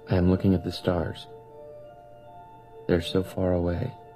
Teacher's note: It's so nice to hear because he kind of trails off a little bit. He has that vocal fry and then he has that sad sound whenever he's recalling something or saying something.